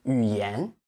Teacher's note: Extend the end, stress the second syllable of the word.